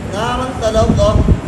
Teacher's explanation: نارن کے تنوین کو ادا کریں گے, غنہ کو ادا کرنے کے بعد پھر اس کو جو ہے نا تا کے ساتھ مشدد کریں گے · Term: ادغام مع الغنہ